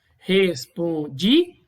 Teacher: Perceba que esse A ele é pronunciado separadamente do di. Ele é um impulso de voz somente dele. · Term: hiato